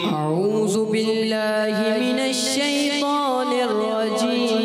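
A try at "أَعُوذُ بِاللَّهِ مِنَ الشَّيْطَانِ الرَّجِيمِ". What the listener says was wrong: सही में थोड़ी गलती हो गई। जाल जो है ना, जा जैसी आवाज आ गई।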